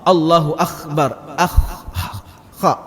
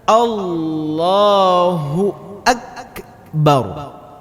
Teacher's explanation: Huruf kha itu keluarnya dari tenggorokan. Sedangkan huruf kaf ini keluarnya dari pangkal lidah.